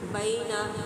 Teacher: بئی یا لین کی علامت نرمی سے ادا کریں گے